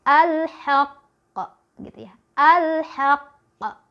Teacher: tahan dulu tasydidnya, baru keluarin bunyi pantulannya ya. Dari tadi pantulannya setengah dari bunyi vokalnya ya. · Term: qalqalah